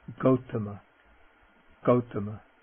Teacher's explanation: Okay, now the G, and the G is always pronounced like G, never like J, as in ginger, never like that. Okay, the voiced non-aspirate G